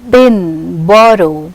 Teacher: b is voiced bilabial plosive. For these two lips come into contact with each other, p, b.